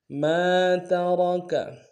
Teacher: میم کے ساتھ الف مدہ ایک امداد میں کھینچیں گے، اور را کو موٹا ادا کریں گے